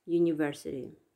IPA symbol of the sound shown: ɜ: